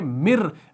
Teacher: अब मिर देखिए, हम मिर रब्बिहिम कैसे पढ़ रहे हैं भाई, हम यहाँ पर इस मीम को इस रॉ के साथ मिला रहे हैं, इस नून साकिन को नहीं पढ़ रहे। मर्ज हो रहा है ना, यहाँ पर कामिल इदगाम हो रहा है, तो हम पढ़ रहे हैं मिर, मीम रॉ ज़ेर मिर।